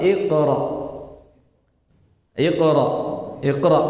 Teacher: ee ringankan tafhimnya, dikurangi tafkhimnya, tapi tidak juga sampai ke kadar huruf kaf